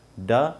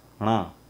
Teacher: ण में आपने देखें थोड़ा सा नेज़ल वॉइस, नेज़ल टोन आता है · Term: नासिक्य